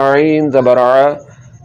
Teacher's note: تو حمزہ کا مخرج یعنی کہ اس کے نکلنے کی جگہ حلق کا نیچے والا حصہ ہے، اور عین کا مخرج حلق کے درمیان والا حصہ ہے۔ عین کو حلق کے درمیان والے حصے سے نکالیں گے